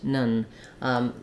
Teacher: letter O because it's in an unstressed second syllable it's going to be a vowel schwa it's going to be very reduced